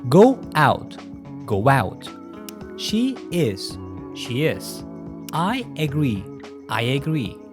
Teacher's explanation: so'z oxiri unli bilan tugadi, undan keyin kelayotgan so'z ham unli bilan boshlangani uchun biz ba'zi paytlarda o'sha w qo'shimchasini qo'shamiz, ba'zi paytlarda esa y qo'shimchasi qo'shiladi. Endi buni native speakerlar ham atilab qilmaydi. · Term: intrusion